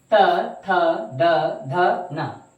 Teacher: दंत ध्वनिया में क्या होता है कि जो जीभ है वो दांतों को स्पर्श करती है